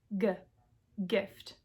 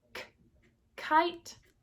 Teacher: Both stop plosives. One voiced, one unvoiced.